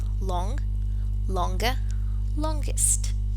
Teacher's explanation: We said it before, and it is that when the stem ends in the velar nasal sound, here you have it, and the spelling suggests this cluster and G, as in the word long, a specific sound, which is the velar plosive, has to be added